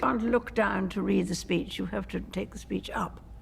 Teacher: there's a tightness in the jaw the queen's lips are quite close together and the vowel sounds are articulated at the front of the mouth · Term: queen's english, the Queen's English